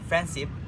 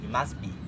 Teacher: no D in friendship, no T in he must be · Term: elision